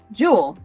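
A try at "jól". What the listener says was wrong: It's pronounced Yol. In Icelandic, it's pronounced Yol. It's a Y sound for the J.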